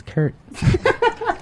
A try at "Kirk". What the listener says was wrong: Kirk. With K at the end. Kirk. Kurt.